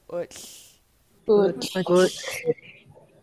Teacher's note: tap the tip of your tongue on the back of your top front teeth, and then you're gonna let all the air bleed out the side of your tongues into your cheeks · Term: the TL